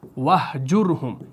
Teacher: یہاں پر وَحْجُرْهُمْ میں را ساکن ہے اور جیم کے اوپر پیش ہے، یعنی ماقبل جو ہے وہ مضموم ہے. تو اس صورت میں آپ کا یہ جو را پڑھا جائے گا یہ موٹا پڑھا جائے گا